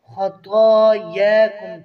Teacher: طا و یا کے اوپر کھڑی زبر ہے ایک ایک الف برابر کھینچیں گے